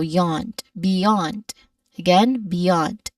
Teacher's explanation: we stress here on the second syllable · Now b is very simple there's only a short a vowel sound a short e vowel sound there and then the second syllable is yand yond which has a short not short but a long a vowel sound. Okay, it ends with a consonant cluster which is a blend of the consonant sounds of the letters N and D.